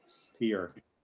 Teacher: other words like, for example, spear, where you don't have an aspirated P